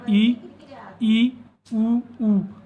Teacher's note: संवृत स्वर हैं। संवृत स्वर जिसके उच्चारण में मुख लगभग हमें बंद दिखाई देता है।